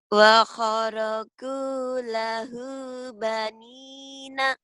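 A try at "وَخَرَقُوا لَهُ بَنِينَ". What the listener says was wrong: Tapi penekanannya belum.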